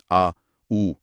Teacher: इन सब के उच्चारण में जीभ का पिछला हिस्सा ऊपर उठता है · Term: पश्च स्वर